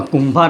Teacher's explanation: કુંભાર અનુસ્વારની અંદર મનો પ્રયોગ થયો છે